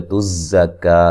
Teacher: زا کو سیٹی سے ادا کریں گے